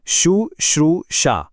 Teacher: पहले श पर छोटा उ और दूसरे श पर बड़ा ऊ।